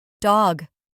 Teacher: To pronounce the word dog correctly, you need to make sure that the D sound is clear and distinct. It should be a quick and sharp sound as if you are tapping the tip of your tongue against the roof of your mouth